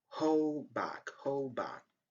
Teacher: The sound d at the end of the first word is silent